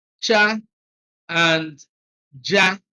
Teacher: the affricate combining the features of the fricative and the plosive